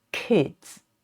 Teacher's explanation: and this sound is not aspirated just as in the English word kids